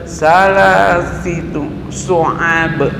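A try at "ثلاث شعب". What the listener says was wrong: Fi terus langsung ke shin besar. Thalathi syu'ab. Thalathi syu'ab. Syu'ab. Fa bukan sa. Fa. Salasi syu'ab. Nah, fa masih ya. Salasi syu'ab. Salasi syu'ab. Masih. Fa. Bukan sa. Fa. Salasi. Salasi. Bukan salah, salasi. Salasi. Nah, bukan salah syu'ab.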